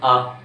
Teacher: कहां से ध्वनि निकल रही है, कंठ से ध्वनि निकल रही है, गले से निकल रही है, यानी इनका उच्चारण स्थान क्या है, कंठ है।